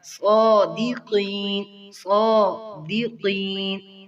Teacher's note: صاد کو اچھی طرح واضح کریں. یہ حروف مستعلیہ میں سے ہے اور موٹا پڑا جائے گا. اس کے اوپر کھڑی زبر بھی ہے, ایک الف کے برابر کھینچیں گے.